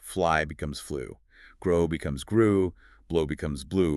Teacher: Notice how they all share that tight pursed lip ending.